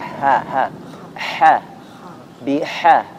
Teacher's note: makhrajnya ha itu di tengah tenggorokan ya. Kemudian sifatnya harus dialirkan nafasnya hamas, dialirkan suaranya rakhawah, biharu.